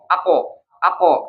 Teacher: kalau kof pada saat kita sukunkan dia ada getaran di pita suara karena kan dia mantul ya, mantul, ako, nah itu bergetar pita suara.